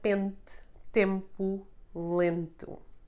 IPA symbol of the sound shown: e͂